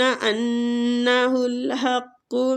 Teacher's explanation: ان نون مشدد پہ غنہ کریں گے